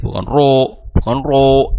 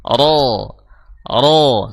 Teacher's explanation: bunyinya berat itu karena adanya kenaikan dari sisi pangkal lidah jadi pangkal lidah itu naik agar kita bisa membunyikan suara tebal bukan dengan memonyongkan kedua bibir